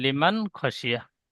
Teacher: নুন সাকিনের পরে হুরুফে হালকি 6টি অক্ষরের মধ্যে খ এসেছে, তাই নুন সাকিনের আওয়াজকে বিনা গুণায় জাহির করে তাড়াতাড়ি পড়তে হয়, একে ইজাহার বলে। · খটা একটু টান হয়ে যাচ্ছে, টান হবে না, বিনা টানে পড়বেন